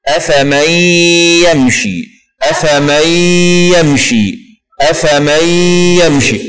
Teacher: لو قلنا الياء: أفمن يمشي، أفمن يمشي. هنا ندغم النون في الياء بدون تشديد وتبقى الغنة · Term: إدغام بغنة